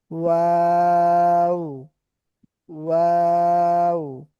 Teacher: দুই ঠোঁট গোল হয়, সামান্য ফাঁকা থাকে, সেই ফাঁকা জায়গা থেকে দুই ঠোঁটের মাঝখান থেকে ওয়া উচ্চারিত হয়